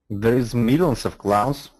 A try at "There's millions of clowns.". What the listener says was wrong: No, I wanted a little bit quicker here. There's millions of clowns.